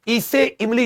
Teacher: जीभ के अगले भाग से इसमें होठ गोल भी नहीं होते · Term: अग्र